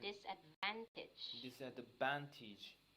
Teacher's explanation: Yes, the accent is in the third syllable.